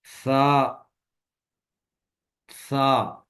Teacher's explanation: सा को पढ़ते वक्त जुबान की नोक सामने वाले ऊपर के 2 दांतों के अंदरूनी किनारों से नरमी से लगाएंगे